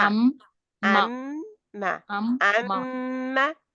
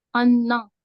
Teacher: मीम जी मुशद्दद और नून मुशद्दद जो है, इनके ऊपर अकमल गुन्ना होता है